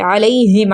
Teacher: زبر کے بعد یا ساکن یا پھر واو ساکن آ جائے تو وہ حروف لین کہلاتے ہیں، اس لیے اس کو جلدی سے نرمی سے پڑھا جاتا ہے